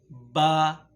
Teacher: جب آپ دونوں ہونٹوں کو بند کر دیتے ہیں یہاں سے با ادا ہوتا ہے